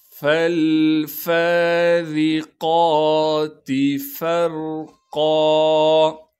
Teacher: فا کو را ساکن سے ملائیں گے، یہاں پر را ساکن سے پہلے زبر ہونے کی وجہ سے را کو موٹا کر کے پڑھیں گے · را کے نیچے زیر آنے کی وجہ سے را کو باریک کر کے پڑھیں گے